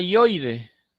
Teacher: Nota la I, vocal cerrada, la O, vocal abierta, la I, vocal cerrada. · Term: triptongo